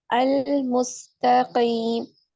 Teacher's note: या साकिन से पहले जीर है तो इसको हम या मदा कहेंगे और दो हराकात के बराबर भी इसको लंबा कर सकते हैं ट काउंट स्ट्रेच कर सकते हैं फोर काउंट भी और सिक्स · ठीक और त भी पुर होगा मोटा पड़ा जाएगा अल मुस्तकीम सीन में सीटी की आवाज आएगी